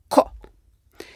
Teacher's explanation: The ancestor of Q, koppa, was not for k, but for a consonant made way in the back of the throat, with the back of the tongue touching the uvula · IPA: /q/